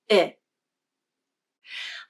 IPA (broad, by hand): ɪ